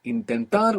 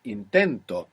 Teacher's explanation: Intentar, we have the accent on the end. When we put the o, the accent is just before it.